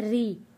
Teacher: کذبا کذبا، وَأَنَّا ظَنَنَّا أَلَّن تَقُولَ الْإِنسُ وَالْجِنُّ عَلَى اللَّهِ كَذِبًا وَأَنَّهُ كَانَ رجالم رجالم، یہاں پہ را زیر ری، جب را کے نیچے زیر آئے گا را کو ہم نے پتلا پڑھنا ہے